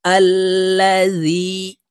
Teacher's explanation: হামজাহ লাম জবর আল, লাম জবর লা, জাল ইয়া জের জি, জেরের বাম পাশে জজমলা ইয়া মদের হরফ, তাই এই জাল ইয়ার সাথে এক আলিফ টেনে পড়ব।